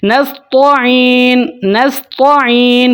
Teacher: अगर हम तो की आवाज़ को मोटा कर लेते हैं, नस्तईन नस्तईन पढ़ते हैं, तो इसका मतलब होता है हम चमकते हैं।